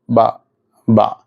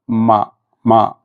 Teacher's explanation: ബ എന്ന് പറയുമ്പോൾ ചുണ്ട് നേരെ ഉച്ചരിക്കുക ചുണ്ടിന്റെ ഉൾഭാഗം കൊണ്ടാണ് ഉച്ചരിക്കുന്നത് ബ മീം ആകുമ്പോൾ ചുണ്ടിന്റെ പുറംഭാഗമാണ് മമ എന്നാൽ ഈ ചുണ്ടിന്റെ പുറംഭാഗം പൂർണമായി ചെയ്യുന്നതിനു വേണ്ടി പൂർണമായിട്ടും ചുണ്ട് മടക്കുന്ന